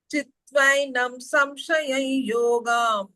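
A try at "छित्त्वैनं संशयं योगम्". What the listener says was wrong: ಸಂಶಯ ಸಂಶಯ before you miss that ಅನುಸ್ವರ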